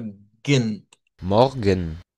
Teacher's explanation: No suena la E. Lo que suena es la G con la N directamente.